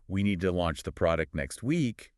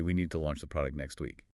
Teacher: a person ends their declarative statements with an upward vocal inflection. So instead of saying, we need to launch the product next week, they say, we need to launch the product next week. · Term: uptalk